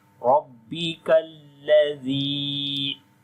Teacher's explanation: ra we read in heavy sound due to fatha sign on it. Ladhi, zal we read softly, and here is ya madda. · Ladhi, zal we read softly, and here is ya madda. Ya is coming with sukun sign on it, and before the ya there is kasra. We long here 2 harakat, like 1 alif, which we can say 1 second.